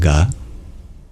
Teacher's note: You bring your tongue and the velar region of your throat together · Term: soft consonant